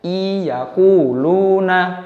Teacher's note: Masuk, nunnya tidak dibaca tetapi langsung masuk ke huruf ya. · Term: idgham bigunanya